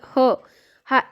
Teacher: फुफुसातील हवा मुखावाटेत जोरात बाहेर फेकली जाते त्याला महाप्राण म्हणायचं मग मुख्य महाप्राण कुठला तर ह एकमेव मुख्य महाप्राण आहे पण